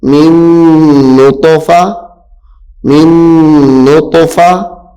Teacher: یہاں پہ طا چونکہ حروف قلقلہ میں سے بھی ہے تو اس کو خوب ظاہر بھی کرنا ہے